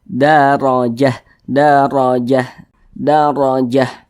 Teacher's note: huruf ro huruf ro yang memiliki tanda baca fathah maka dia dibaca tebal dibaca tkhim sehingga pangkal lisan kita itu naik terangkat ke atas